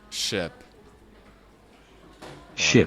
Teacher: un I bref, explosif, vertical